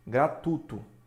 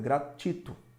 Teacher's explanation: Então, a gente observa que o U, de fato, é a vogal e o I, a semivogal.